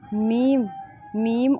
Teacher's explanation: میم، میم اور نون میں آواز جو ہے وہ ناک میں جا رہی ہے، اسے ہم غنہ کا مخرج بولتے ہیں، بس اتنا ہی آپ یاد رکھیے۔